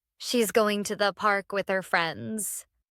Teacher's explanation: Going to becomes gonna in casual conversation. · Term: common reduction